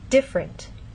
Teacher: and especially formal speech you might get this pronunciation differerent but often in fast speech you lose that middle sound and you get different